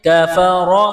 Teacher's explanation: کاف زبر کا، فا زبر فا، کفا، را زبر را، را کو موٹا کرنا ہے